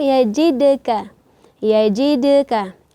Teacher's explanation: Ini kita pantulkan karena sifatnya qalqalah sughra.